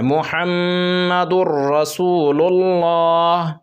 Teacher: دال کو را میں ملا کر پڑھنا ہے اور وہ بھی بغیر غنہ کے ساتھ پڑھنا ہے